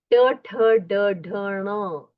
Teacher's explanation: ट ठ ड ढ ण इसका उच्चारण मूर्धा मतलब अपर पैेट को स्पर्श करके उच्चारण किया जाता है